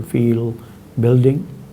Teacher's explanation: The velarized L occurs word finally or when followed by a consonant